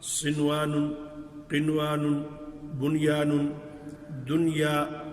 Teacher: نون کو اس کے مخرج سے بغیر کسی تبدیلی کے ادا کر دیں گے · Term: اظہار مطلق